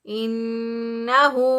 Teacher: اس ہا کو ایک الف کے برابر لمبا کریں گے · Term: الٹا پیش